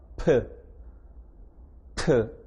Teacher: 프 소리 낼 때 일단은 입을 닫아야 됩니다. 닫은 후에 열면서 파열시킵니다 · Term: 파열음